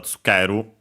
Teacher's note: the U barely heard if at all in tsukeru, because it's between unvoiced consonants